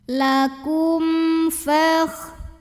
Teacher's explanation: mim sukun ini dibaca idhar atau jelas bunyi M-nya ya, tidak perlu kita tahan. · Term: idhar syafawi